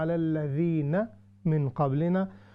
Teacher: آپ علی الذین کو لمبا ہم نے نہیں کرنا, تھوڑا سا پڑھنا